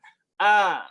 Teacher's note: Fathahnya orang Arab adalah fathah pertengahan.